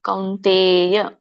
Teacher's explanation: ಕೌನ್ ತ ವರ್ಗ ಇರೋದ್ರಿಂದ ಅಲ್ಲಿ ನ ಬರುತ್ತೆ ಅನುಸ್ವಾರ